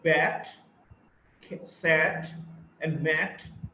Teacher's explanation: It's a front, unrounded, short vowel